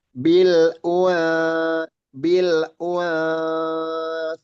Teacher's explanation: Persiapkan huruf tsa dan samarkan huruf nunnya. · sa makhrotnya di ujung lidah. Ujung lidah bertemu dengan gigi seri atas. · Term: huruf sa